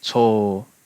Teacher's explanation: So in this case, instead of cho ng, because obviously Japanese doesn't have an ng at the end of a syllable, it's just cho with a long o